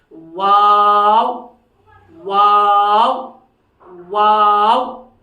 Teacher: दोनों होंठ जबकि न मिले, ये आपस में नहीं मिलेंगे, और उस वक्त होंठ जो है गोल रहेंगे, आपस में मिलेंगे भी नहीं, और होंठ गोल हो जाएंगे।